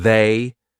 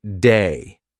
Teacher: The voiced TH, lots of English learners will pronounce it like a D. So instead of saying they, they'll say something like day.